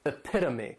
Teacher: this noun has 4 syllables, and the stress is on that second syllable. Epitome. This is a word that when you see it, many times people may mispronounce it because the third syllable has that schwa and the last syllable is that long E.